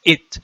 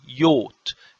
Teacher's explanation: The Coptic tells me that because I know Coptic, so I know that the word father means yot, so I know that there is a vowel O here between the I and the T